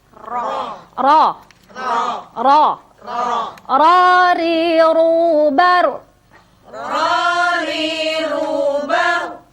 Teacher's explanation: Walaupun ro itu sesungguhnya dia memiliki sifat yang dominan, yaitu sifat takrir atau getar. Ya, tetapi dia getarnya tidak melebihi dari 2 gerakan